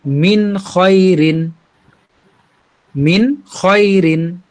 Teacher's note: কোন প্রকার কোন নাকের ভিতরে না নিয়ে গুন্না না করে একদম স্পষ্ট করে বলবো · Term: ইজহার